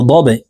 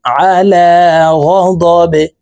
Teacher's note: বা কলকলার হরফ নিচের দিকে ধাবিত করে ধাক্কা দিয়ে উচ্চারণ করতে হবে